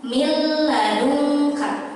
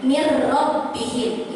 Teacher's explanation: Kalau idgham bi gunnah itu ada dengungnya, ada dengung sedikit. Kalau bila gunnah tidak ada dengungnya. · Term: idgham bila gunnah